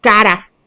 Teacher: sonido vibrante débil, en cara